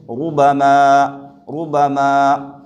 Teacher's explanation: اس را کے اوپر پیش ہے لہذا اس را کو پر پڑھیں گے